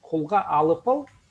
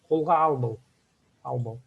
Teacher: Сокращается и П превращается в Б и получается албал.